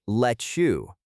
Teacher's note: For pronunciation, let's look at let you. The T at the end of let and the Y at the start of you merge together to create a soft chish sound. It sounds like let you.